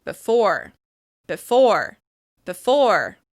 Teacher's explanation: As you can hear, I'm reducing that first syllable in order to really focus attention on that second syllable